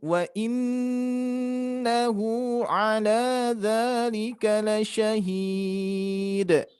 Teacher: nun bertasid harus kita dengungkan, ditahan dulu.